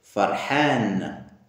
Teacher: Le H aigu expiré de la gorge, dans la gorge aiguë.